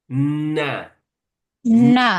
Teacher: E tapi ada kaitan dengan makhraj huruf lam sama nun itu makhrajnya ujung lidah kita bertemu gusi atas